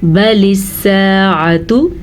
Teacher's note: यहाँ पे अलिफ मद्दा है तो हमने अलिफ को खींच के पढ़ा है